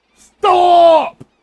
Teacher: You elongate the vowel, not the consonant.